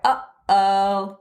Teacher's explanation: Those are two vowels that just go up and down in the back of your throat. That's easy to make, easy to imitate.